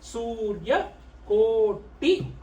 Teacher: Then the Surya Koti, you have the Su. This is the long U sound.